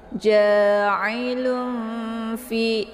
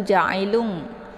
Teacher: Maka ini dinamakan dengan ikhfa awsat ya. Jadi cara bacanya yaitu tanwinnya disamarkan siap-siap masuk ke huruf fa